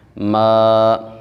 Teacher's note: ما، جب الف سے پہلے والے حرف کے اوپر زبر آ جائے، الف مدہ ہوتا ہے، تو الف مدہ کو بھی ہم نے ایک الف کے برابر لمبا کرنا ہوتا ہے